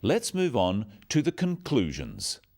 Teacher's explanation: stressing conclusions because it's the key word in the sentence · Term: sentence stress